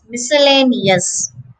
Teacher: the pronunciation just has five syllables the stress is on the third syllable